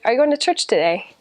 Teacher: you go up and then down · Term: intonation